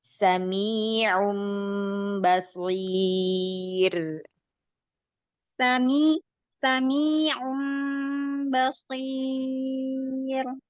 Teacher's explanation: Saya mendengar bahwa sukun 'ya' dalam 'sami' memiliki beberapa nasalisasi (ghunnah). 'sami' , bersihkan 'ya' mad dari ghunnah